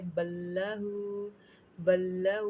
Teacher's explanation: बा को लाम के साथ मिला देंगे। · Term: इदगाम बिला गुन्ना